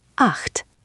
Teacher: The acht here is a soft guttural sound, almost like clearing your throat, but very gentle.